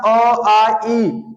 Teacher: निरनानुसिक मतलब जिसमें निर जुड़ गया, अनुनासिक मतलब नाक, अर्थात निर मतलब नहीं, जिसमें केवल या मौखिक स्वर बोलते हैं जिन स्वरों को उच्चारण में हवा केवल मुंह से निकलती है